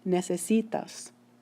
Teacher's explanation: So in pronouncing, necesitas, you should be able to hear that the stress is falling on the next to the last syllable